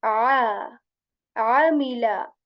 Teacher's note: Ain letter from the middle portion of the throat